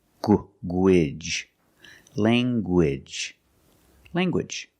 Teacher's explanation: Let's look at more words where you have ng in the middle and you make the hard g sound, like language, language. You have the nasal ng sound, lang, and the hard g, gwidge, language, language.